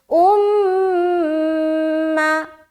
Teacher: میم کے اوپر شد ہے تو میم مشدد کا غنہ کریں گے